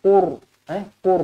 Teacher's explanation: ra dibaca tebal kerana sebelumnya berbaris depan. Ingat ra kita kena baca tebal kalau sebelumnya berbaris atas atau baris depan.